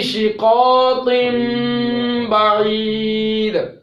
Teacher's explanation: نون تنوین کو میم سے تبدیل کر دیتے ہیں وجوباً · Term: اقلاب